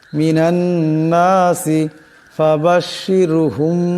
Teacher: মিনান নাসি ফাবাশশিরহুম এখানে মিম সাকিন, মিম সাকিনের পর বা আসছে, এই মিম সাকিনকে একালে পরিমাণ গুণ্য করিয়া পড়তে হবে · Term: ইকফাই মিম সাকিন